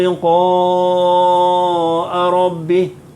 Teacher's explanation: Liqa panjang, 5 harakat